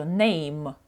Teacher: моє слово закінчується на звук м це і не прочитується